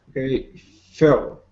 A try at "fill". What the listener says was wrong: Yeah, there you go. Excellent.